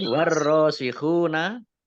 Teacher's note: Baik, warrosikhuna, alif lamnya alif lam samsiah karena tidak dibaca, langsung masuk ke huruf berikutnya yaitu ro